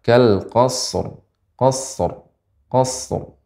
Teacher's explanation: ra dibaca dengan tebal